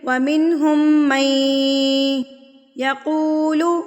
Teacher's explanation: جب ہم نے میم کو یا سے ملانا ہے تو غنہ کے ساتھ ملانا ہے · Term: ادغام مع الغنہ